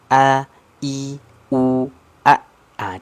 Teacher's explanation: a ini contoh huruf hamzah ini kan yang suara tertahan a i u a Ah tidak ada aliran suara kan tidak